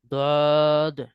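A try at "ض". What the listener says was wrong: মুখ পাশ করে ফেলেছেন কেন? মুখ উপর নিচ করেন, একদম শুরু থেকে শেষ পর্যন্ত উপর নিচে রাখবেন এইভাবে। বদ। আরো উপর নিচ করেন, মুখে ভরাট করে রাখেন, একদম ভরাট।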